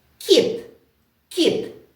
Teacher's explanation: в цьому слові звук к м'який